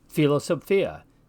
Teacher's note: What that means for us when we're pronouncing classical Latin is that we're going to have both of the sounds in one of those double consonants. In the Latin word for philosophy, for instance, philosophia, we hear both the P and the H. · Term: rough breathing